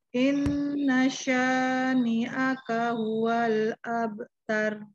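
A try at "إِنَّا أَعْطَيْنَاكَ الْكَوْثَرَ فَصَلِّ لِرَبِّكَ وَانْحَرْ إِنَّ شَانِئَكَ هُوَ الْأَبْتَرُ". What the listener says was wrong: Bagus bacaannya.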